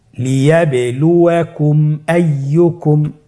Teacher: মিম সাকিনকে স্পষ্ট করে গুণনা ছাড়া পড়তে হবে। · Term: ইজহারে শাফাউই